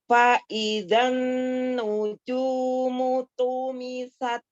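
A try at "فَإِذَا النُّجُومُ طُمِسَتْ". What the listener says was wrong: Hilang yang kedua hilang, yang ini hilang ya. Nun tasdidnya gunahnya disempurnakan. Fa'idzan nujumu tumisat. Tumisat.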